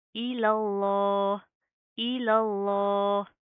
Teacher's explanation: इस लफ्ज़ अल्लाह के लाम को हम मोटा पढ़ेंगे